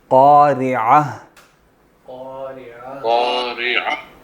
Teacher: اگر عین کی آواز نہیں آئے گی تو یہ یا بن جائے گا